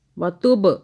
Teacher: با پہ قلقلہ یعنی کہ جھٹکا ہو گیا